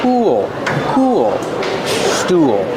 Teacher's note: Use the ooh sound like cool and pool. Link to the dark L.